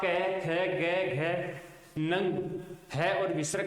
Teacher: आप कै, ख, ग, घ, नंग, है और विसर्ग का उच्चारण स्थान करेंगे ना, तो श्वास वायु है वो कंठों को स्पर्श करते हुए उसके बाद बाहर निकलेगी मुख से